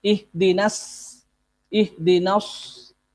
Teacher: Ya, shad diganti dengan sin.